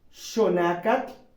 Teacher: el sonido de esa consonante es diferente al del español tendrá un sonido de sh